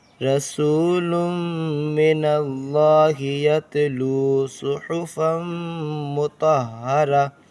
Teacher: میم پر تشدید ہے، گنہ کریں گے